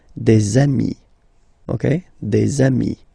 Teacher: Okay, and so you've got des ami, okay? And if you make the liaison, so the link between the two, you will get des amis